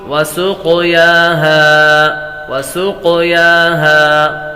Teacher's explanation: क़ाफ को क़लक़ला करेंगे।